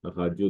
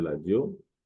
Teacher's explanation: En lingala, la lettre R se prononce L, radio devient ladio.